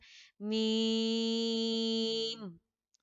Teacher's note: मीम की आवाज जो लास्ट में उसको रोकना है, इसे मीम ऐसे करके बहुत मिस्टेक्स आती हैं आप लोगों की, तो इस मिस्टेक से आपने बचना है, आपने आवाज को रोकना है, मीम।